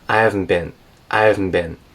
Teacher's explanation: She kind of takes out the H there.